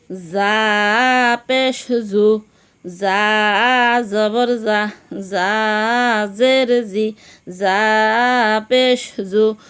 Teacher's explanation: যা সামনের নিচের দাঁতের আগা থেকে শীর্ষসহ পাতলাভাবে আদায় হবে, নইলে জিম, জাল অথবা জ অক্ষর আদায় হয়ে পড়া হারাম হয়ে যাবে।